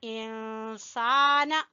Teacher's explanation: سین کو کھینچیں گے الف مدہ کی وجہ سے